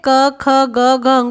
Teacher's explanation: क वर्ग के जितने वर्ण हैं क, ख, ग, घ, ङ, ये सभी कंठ से उच्चारित होते हैं